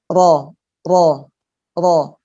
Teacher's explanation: ujungnya pinggir-pinggirnya nempel tapi tengahnya ada ruang untuk keluarnya suara disitu sehingga menjadi getar